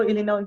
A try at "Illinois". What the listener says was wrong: You know, in we don't pronounce the S on that state in English, Illinois. No se pronuncia la S al final, Illinois.